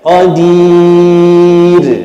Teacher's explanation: Ra di hujung nipis, pastikan kita senyum sikit baru cantik dapat.